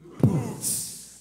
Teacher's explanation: that percussive B, that deep oo, and that percussive ts at the end